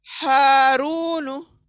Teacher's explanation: हा खींचना है, रू खींचना है, हारूनु। हा सीने की तरफ से आवाज आएंगी, हारूनु।